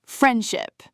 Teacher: Friendship, the D almost vanishes. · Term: elision